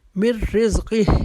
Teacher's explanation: من نہیں پڑھیں گے, مر پڑھیں گے, کیونکہ نون ساکن کے بعد را آ رہا ہے. یہاں پر ہم نے جو اس ادغام کرنا ہے یا اس کو غنے کے ساتھ نہیں کرنا, فوراً ہم نے اپنی آواز کو میم کے ساتھ ملانا ہے.